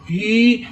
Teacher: ہا کے نیچے زیر ہے, یہ ہا جو ہے یہ سینے کے جوڑ سے ادا کریں. ہی مگر میم ساکن ہے, اس کو ہا کو میم کے ساتھ ملائیں گے.